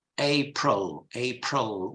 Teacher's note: in English it's April April with a schwa